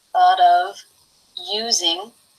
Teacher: tongue up to make the T, which is a D here